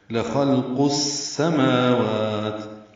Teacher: میم واو کو دو حرکات لمبا کریں گے، واو میں ہونٹ آگے کی جانب لائیں گے، نہ تمام گول کریں گے